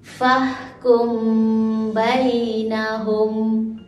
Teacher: Dibaca secara dengung dengan kadar dua harakat. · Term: Ikhfa Syafawi